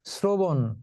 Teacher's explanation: যেমন এই যে শ্রবণ, এটা কিন্তু তালব্য স উচ্চারিত হবে না, এটা উচ্চারিত হবে দন্ত স এর মতো, শ্রবণ। অর্থাৎ র ফলা থাকলে তালব্য সটা দন্ত স এর মতো উচ্চারিত হয়, কিন্তু সাধারণত তালব্য স তালব্য সই থাকে।